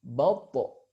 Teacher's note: Huruf to juga memiliki sifat qalqalah, sehingga ketika disukunkan dia terdengar memantul.